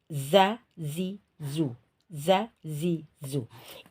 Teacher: gigi seri bawah ini dinding dalam bagian gigi seri bawah lalu suaranya dari zai ini keluar dari dua cela gigi dan bawah ini ya Za Zi Zu Za Zi Zu ini